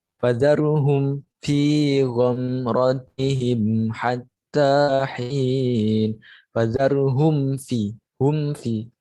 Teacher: Mim sukun bertemu dengan fa. Fa-nya dengan jelas. Jadi hum fi. Jadi tidak meleburkan bacaannya dengan fa-nya. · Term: idhar syafawi